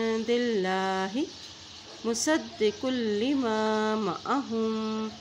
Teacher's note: स्वाद की ज़बर को दाल के साथ मिलाएंगे क्योंकि दाल के ऊपर शद है, और कॉफ, ये काफ मोटा अदा किया जाता है।